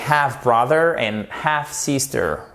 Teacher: vous faites bien attention à ne pas me prononcer, s'il vous plaît, le L